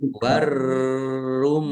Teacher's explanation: Mim tasdid dibaca ghunah atau mendengung ditahan di biar tampak mendengungnya.